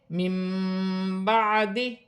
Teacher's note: نون ساکن کی آواز کو میم سے بدل کر غنے کے ساتھ ادا کیا جائے گا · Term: اقلاب کا قاعدہ